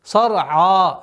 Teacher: Сад твердый звук, ра твердый звук, айн мягкий звук.